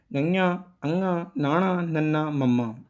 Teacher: ਇਹਨਾਂ 5 ਅੱਖਰਾਂ ਦਾ ਉਚਾਰਨ ਜਿਹੜਾ ਆਪਾਂ ਕਰਦੇ ਹਾਂ ਉਹ ਨੱਕ ਰਾਹੀਂ ਕਰਦੇ ਹਾਂ। ਇਸ ਕਰਕੇ ਇਹ ਪੰਜਾਬੀ ਵਰਨਮਾਲਾ, ਗੁਰਮੁਖੀ ਵਰਨਮਾਲਾ ਦੀਆਂ ਨਾਸਕੀ ਧੁਨੀਆਂ ਨੂੰ ਪ੍ਰਗਟ ਕਰਨ ਵਾਲੇ ਅੱਖਰ ਨੇ। · ਇਹ ਉਹ ਧੁਨੀਆਂ ਨੇ ਜਿਨ੍ਹਾਂ ਦਾ ਉਚਾਰਨ ਕਰਨ ਸਮੇਂ ਜਿਹੜੀ ਕੁਝ ਆਵਾਜ਼ ਆ ਉਹ ਨੱਕ ਰਾਹੀਂ ਬਾਹਰ ਨਿਕਲਦੀ ਆ।